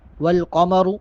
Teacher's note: الشمس والقمر بحسبان، الشمس والقمر بحسبان۔ والقمر، قاف اور را دونوں کو پڑ کر کے یعنی موٹا کر کے ادا کریں گے